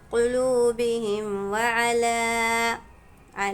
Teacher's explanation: میم ساکن آ گیا، فوراً اس کے بعد والا حرف چیک کریں گے کہ با ہے یا میم ہے، با بھی نہیں ہے میم بھی نہیں، کوئی بھی حرف آ جائے میم ساکن کے بعد تو اس میم کو ظاہر کرنا ہے، بالکل بھی غنہ نہیں ہوگا